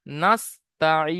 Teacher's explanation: যেমন নাস্তাইন, এখানে এক আলিফ টান দিয়ে দিলে হয়ে যেত, কিন্তু থামার কারণে 3 থেকে 4 আলিফ টান দিতে হবে। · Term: মাদ্দে আরজি ওয়াকফি